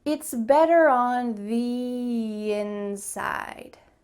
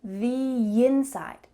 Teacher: when we have the, we're going to add a little Y sound.